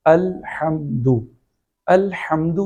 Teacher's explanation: ایک حرف کی جگہ دوسرے حرف کو پڑھنا، ایک حرف کی جگہ دوسرے حرف کی آواز نکالنا، لحن جلی کی پہلی صورت ہے، جس کی مثال الحمد، الحمد میں ہا کا لفظ اس کا مخرج گلے کے درمیان کا حصہ ہے